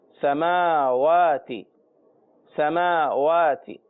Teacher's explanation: میم کے اوپر بھی کھڑا زبر اور واو کے اوپر بھی کھڑا زبر، دونوں کو کھینچیں گے